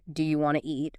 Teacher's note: Sometimes sounds are dropped entirely like the T often disappears in want to